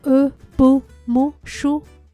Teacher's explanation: To pronounce them, my lips naturally form that soft O shape.